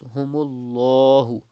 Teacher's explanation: There is pesh before the lam of Allah's name. You have to read with thicker voice.